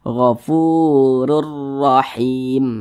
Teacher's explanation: Kedua-duanya dibaca tebal, kedua-duanya dibaca tafkhim. Nah, sehingga pangkal lisan kita naik terangkat ke atas ketika kita mengucapkannya. Jadi ditebalkan kedua-duanya.